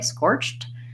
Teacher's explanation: the letters edie say T when when they're after a word with a CH so scorched sounds like that · you do really want to hear that T otherwise it's gonna just sound like scorch